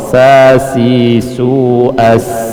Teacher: Kalau sin, dia ujung lidah nempel di gigi seri bawah